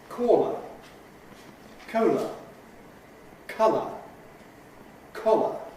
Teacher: The final vowel each time is a schwa, our weak vowel